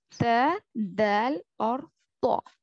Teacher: सामने वाले ऊपर के दांतों के अंदरूनी हिस्से को जुबान की नोक लगने से ये 3 हर्फ अदा होते हैं। और इन तीनों हर्फों का नाम है हुरूफ नितइया।